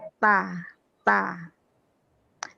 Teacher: Jadi kalau ta biar dia hamas, jangan digigit lidahnya, tapi agak di belakang gigi sedikit. Ta, bukan ta.